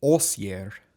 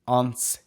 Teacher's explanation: And basically what happens in an Old Saxon, in this instance, is that the N before the S disappears. It still remains intact in German, and it actually still remains intact in Dutch.